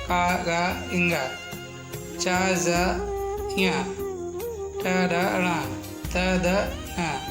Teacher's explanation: बोलते समय मुख से कम वायु निकलती है, उन्हें अल्प प्राण व्यंजन कहते हैं।